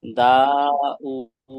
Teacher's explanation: ওয়াও এর উপর উল্টা পেশ আছে, এটা ওয়াও মাদ্দার সমান, এক আলিফ, এক আলিফ পরিমাণ টান দিয়ে পড়তে হবে